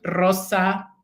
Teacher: I remember when I was learning Spanish and I had a teacher who was trying to teach us to produce this difficult sound in Spanish for English speakers, which is the double R sound, right? The multiple vibrant sound.